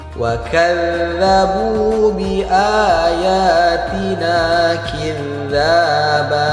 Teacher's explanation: Cara bacanya ujung lidah harus kita gigit dengan dua gigi atas dan dua gigi bawah. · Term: huruf dza